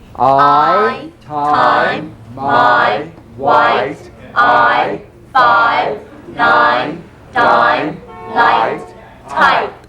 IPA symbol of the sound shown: aɪ